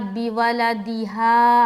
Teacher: आगे हा में खींच रहे, हा में जल नहीं पढ़ना, हा में अलिफ मद्दा कर रहे तो यहाँ पर खींचेंगे